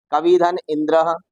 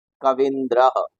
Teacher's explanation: कवि में ह्रस्व ई है और इंद्र में भी ह्रस्व ई है, दोनों को मिलाकर बन गया दीर्घ ई और बन जाएगा कविंद्र।